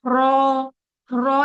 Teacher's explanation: जबान का जो हिस्सा है वो टिप ऑफ द टंग जो है वो कहाँ लगी हुई है, हमारे ऊपर के दांतों के मसूड़ों की तरफ। लेकिन हैवी करने के लिए क्या हो रहा है, पीछे की जो जबान है वो तालू की तरफ उठ रही है।